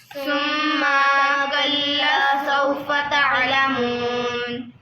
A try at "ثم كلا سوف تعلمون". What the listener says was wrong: बेटे पहले लफ्ज़ों को समझो फिर बोलो सुम्मा को लंबा नहीं करना कल्ला को लंबा करना है सुम्मा कल्ला